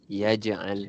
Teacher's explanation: Jim tu dipanggil qala surah. Duduk di tengah-tengah perkataan. Jadi kita ada lantunan sedikit.